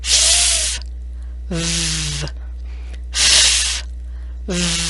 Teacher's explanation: these two sounds use the lower lip and teeth and air is blown out over the lower lip like it is cooling the lip your upper teeth rest on your lower lip f v f v the F has no throat vibration and